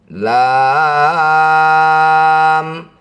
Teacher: Yang ada hanya tanda mad. Baca huruf aslinya lam hanya dipanjangkan enam harakat.